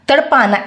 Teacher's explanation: इसमें नाक से ध्वनि का प्रयोग ही नहीं है।